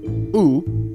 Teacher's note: ooh the high back tense vowel